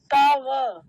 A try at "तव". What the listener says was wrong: हाँ तव, बस इतना ध्यान रखना है, मुझे लगा तब बोला था, तब तब नहीं तव।